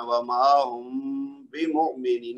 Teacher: میم ساکن ہو اور اس کے بعد با متحرک ہو تو میم کو ہم نے 2 حرکت تک لمبا کرنا ہے اور غنہ کرنا ہے، اور ہونٹوں کو ملنے بغیر یہ میم کو لمبا کرنا ہے